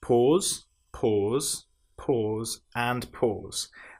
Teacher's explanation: these are all made with the long vowel sound o